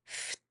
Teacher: there's a slight T at the end